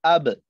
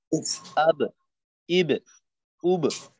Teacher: এই যে আওয়াজটা একটু ফিরে আসে, এইটা হইলো মূলত কলকলা